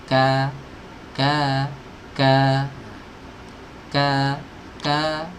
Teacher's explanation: kaf itu berada di pertemuan antara langit-langit yang keras dan langit-langit yang lunak. Nah, jadi pangkal lidahnya ditempelkan ke situ. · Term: huruf kaf